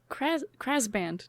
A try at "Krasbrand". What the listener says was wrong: Krasbrand. 2 R's.